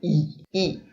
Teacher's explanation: Tem um quadro fonológico com, por exemplo, as vogais, eles têm uma vogal diferente do que a gente tem, que é uma espécie de I falado com a língua mais alta e no centro da boca